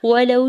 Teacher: ولو میں واو ساکن سے پہلے لام کے اوپر زبر ہے، واو لین ہو رہا ہے